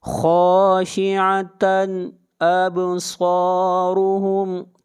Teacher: تن یہاں پر اظہار ہوگا، اس لیے کہ تنوین کے بعد حمزہ ہے، اور حمزہ حروف حلقی میں سے ہے۔